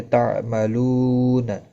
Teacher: واو مدہ ہے، ایک الف کے برابر کھینچ کر پڑھیں گے